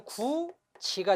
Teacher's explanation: 굳다 다음에 이가 오면요, 연음 되면 디귿으로 넘어가면 구디가 됩니다. 그리고 디귿과 이가 만나면 동화 돼서 구지가 되죠. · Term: 동화 현상